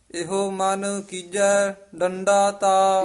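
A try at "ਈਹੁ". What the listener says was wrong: ਇਹੋ ਨਹੀਂ ਕਹਿਣਾ, ਈੜੀ ਲਾਂ ਹਾਹੇ ਹੋੜਾ ਇਹੋ ਹੈ। ਈੜੀ ਸਿਹਾਰੀ ਹਾਹੇ ਓੰਕੜ ਇਹੋ, ਛੇਤੀ ਉਚਾਰਨ ਕਰਨਾ ਹੈ।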